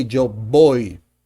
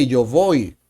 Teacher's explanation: For the pronunciation, remember that at least in Colombia and pretty much in most of Latin American countries, the V and the B sound the same